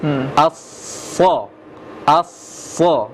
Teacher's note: Dia ujung lidah di belakang, di bawah, sama dengan sin. Masuk itu juga ujung lidahnya. Tapi bedanya apa? Pangkal lidah, tengah lidah naik. Aso, sama dengan pangkal lidah, tengah lidah naik, sama dengan dho tadi, sama dengan to tadi, ya, sama dengan dot tadi.